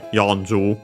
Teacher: accented on the first mora on its own